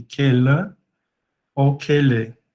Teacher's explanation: a vogal final, né, em final de palavra, ela acaba se alongando